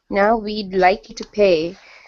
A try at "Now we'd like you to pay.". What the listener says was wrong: That's it.